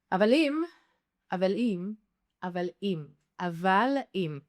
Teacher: we don't really emphasize this glottal stop. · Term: blending the words